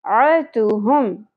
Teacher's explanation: عین وسط حلق سے زبر کو زیادہ نہیں کھینچنا